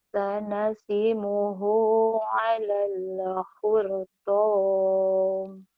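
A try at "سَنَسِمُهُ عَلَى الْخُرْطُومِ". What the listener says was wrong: jangan hortaum, khurtum, tum, khurtum, hortaum, jangan taum, ya.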